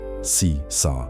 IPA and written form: ˈseːsar (Caesar)